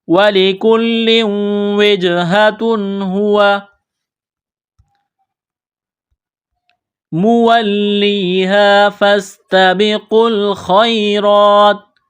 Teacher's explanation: الف سے پہلے زبر ہے، حروف مدہ الف ہے، ایک الف کے برابر اس کو کھینچنا ہے۔ سین میں سیٹی کی آواز پیدا کریں گے، سین کو باریک کرنا ہے۔ یہ قاف ہے، بڑا قاف نقطوں والا ہے، اس کو موٹا کرنا ہے۔ · یہاں تنوین ہے، تنوین کے بعد ہا ہے، حروف حلقی ہے تو غنہ نہیں کریں گے، آواز ناک میں نہیں چھپائیں گے۔